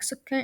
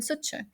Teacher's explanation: Some villages used to convert the ka letter into a cha